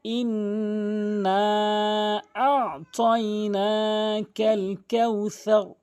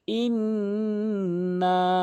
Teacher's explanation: হামজা নুন জের ইন ওয়াজিব গুন্না করতে হবে। নুনে অথবা মিমে যদি এরকম তাসদীদ দেখেন তাহলে ওয়াজিব গুন্না করবেন।